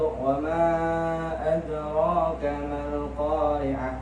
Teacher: ada huruf dal yang sukun yang terletak di tengah, maka itu disebut dengan qalqalah sughra